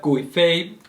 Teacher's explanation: Gui Fei, fourth and first tone